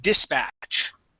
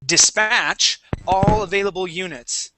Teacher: Now, if we're talking about the verb, okay, the accent goes at the end.